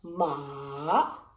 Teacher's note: the third tone is ma ma you go down and up